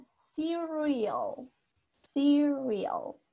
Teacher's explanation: La R no es así tan marcada como nosotros a veces lo hacemos en Spanish.